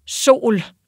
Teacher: når vi har den her lange vokal, så kan vi have et stød på, særligt om det er sådan et enstavigt ord. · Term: glottal stop